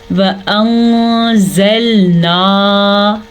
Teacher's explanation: وَأَنزَلْنَا، واو کو لمبا نہیں کریں گے کیونکہ واو کے اوپر زبر ہے، اور نون ساکن کے بعد حروف اخفا میں سے زا آیا ہوا ہے تو ہم نون ساکن کو چھپا کے پڑھیں گے